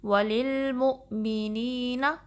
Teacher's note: وللمؤمنین میں لام جو ہے اس کو ہلانا نہیں ہے، اس کو پر نہیں پڑھنا، ہیوی نہیں پڑھنا